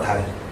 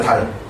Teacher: 혀 양옆으로 소리가 빠져나오게 되는 거야